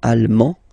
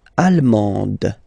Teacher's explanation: you don't pronounce the final D, but then you pronounce it here for the feminine form.